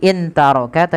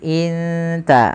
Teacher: bacanya bukan lagi intaroka tapi inta, langsung samarkan kepada makhraj daripada huruf ta. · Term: ikhfa